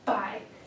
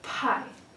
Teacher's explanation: Buy has the noisy sound B, and pie has the quiet sound P.